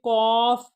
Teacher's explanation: زبان کا پچھلا حصہ کوے کے قریب جا کر باہر آتی ہوا میں رکاوٹ ڈالے گا، تو پھر قوف کی آواز جو ہے وہ نکلے گی۔ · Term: لحاظی